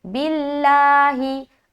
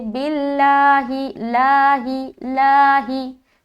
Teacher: लफ्ज़ अल्लाह का लाम को बारीक पढ़ना है